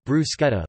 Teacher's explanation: In Italian and non-English-speaking countries, bruschetta is pronounced [bruˈsketta]